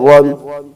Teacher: را پر دو زبر ہیں تو را کو پر پڑھیں گے